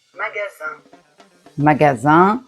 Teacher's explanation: On peut observer que in ça fait le son 1 quand derrière il n'y a rien.